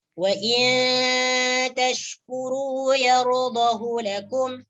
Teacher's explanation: Jadi dalam perkataan yardahu lakum, hunya jangan dibaca panjang, dibaca pendek.